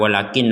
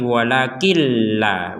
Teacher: Nun bersukun masuk langsung ke lam